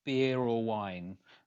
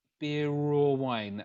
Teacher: Beer or wine, and we end up singing raw instead of or. So this happens because the word ends in a vowel, So all of these words on the left-hand side all end in vowels, as you can see, or vowel sound, should I say.